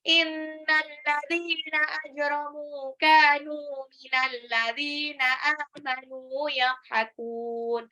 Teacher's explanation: Ajramu, jimnya Qalqalah, mimnya 2 harokat, kafnya 2 harokat, nunnya juga 2 harokat · Inna, ingat gunnah, nunnya ditahan.